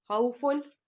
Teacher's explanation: واو ساکن سے پہلے زبر، یہاں پہ واو لین ہوگی